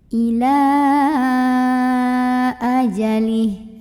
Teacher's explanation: Maka lamnya ini boleh kita panjangkan 4 atau 5 harokat. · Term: mad jaiz munfasil